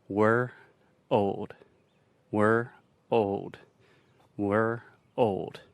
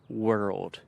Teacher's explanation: as you keep getting faster and faster eventually those two sounds just combine together and you begin to say world